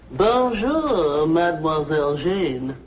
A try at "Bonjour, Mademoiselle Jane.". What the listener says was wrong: That's very good. Except for the mwah. Must be soft. Mwah.